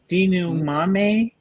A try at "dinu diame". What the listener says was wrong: You keep a D. You stay with your D, yes. Dinu diame, yes.